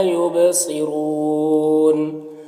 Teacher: یبصرون با میں قلقلہ ہوگا ، صاد کو پر پڑھیں گے، را کو بھی پر پڑھیں